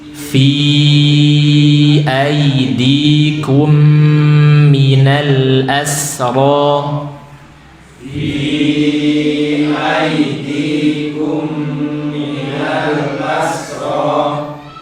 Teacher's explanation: Fi-nya 4 atau 5 harokat, okay?